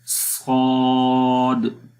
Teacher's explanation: زبان کی جو جڑ ہے وہ اوپر تالو کی طرف اٹھ رہی ہے، مطلب کہ آواز تالو کی طرف جا رہی ہے۔ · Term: استعلا